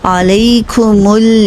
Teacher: میم کے لیے دونوں ہونٹوں کو بند کریں گے، میم ادا ہوگا، پھر میم کی پیش کے لیے ہونٹ دوبارہ گول ہوں گے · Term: ٹو رولنگ